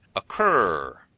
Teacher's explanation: North Americans put that characteristic “rrr” sound at the end.